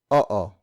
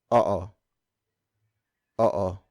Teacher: in Tagalog words with double vowels like oo, we pronounce the vowels separately. So it's not oo, it's oo. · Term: double vowel pronunciation